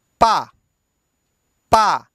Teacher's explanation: होठों को मिलना पड़ेगा और होठों को मिलकर खुलना पड़ेगा। · अब आप पा बोलिए तो देखिए, पा में दोनों होठ आपस में लड़ेंगे। पा यानी पहले मिलेगा फिर छूटेगा तभी पा आएगा। और मान लो एकदम बंद किए रहें तब भी पा नहीं बोलेगा।